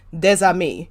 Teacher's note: Is that common that the ES, if you have a vowel after it turns into like a Z type sound?